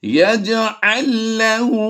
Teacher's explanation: ये लाम की आवाज़ इसमें गुम हो जाएगी, तो ये एक लाम पढ़ी जाएगी, दूसरी ये वाली लाम नहीं पढ़ी जाएगी।